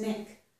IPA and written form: nɪk (knick)